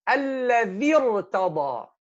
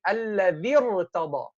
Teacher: the ra is sakina preceded by an original kasra, still we make it heavy